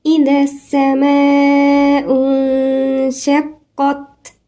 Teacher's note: الذال هنا من الحروف اللثوية · السماء في مد، المد ده مد متصل 4 حركات